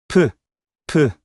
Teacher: 입술을 다물었다가 바람과 함께 터뜨리는 소리예요. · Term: 피읍 소리